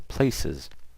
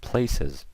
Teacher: And you see it makes that Z sound, not an S sound.